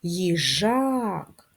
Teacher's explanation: їжак наголос на другий склад на а